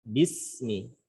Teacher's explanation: Huruf sin pada kata bismi itu memiliki sifat rakhawah atau rikhwah, mengalir suaranya.